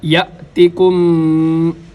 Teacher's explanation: ولما یأتکم، یہاں پر حمزہ ہے تو حمزہ مجزوم ہے، لہٰذا حمزہ کے اوپر جھٹکا دیں گے